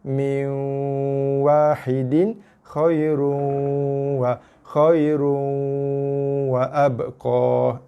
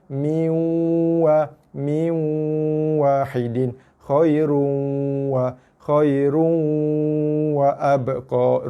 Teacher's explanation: Saya harap tuan-tuan dan puan-puan boleh nampak perbezaan bunyi tu Okey, maksudnya bacaan dimasukkan ke dalam waw tapi dengan kadar yang sederhana. Masuk tapi jangan ditekan.